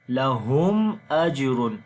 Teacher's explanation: After the mim sakin there is hamza, so we make the clear sound of mim.